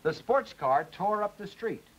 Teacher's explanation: Secondary stress now on tore.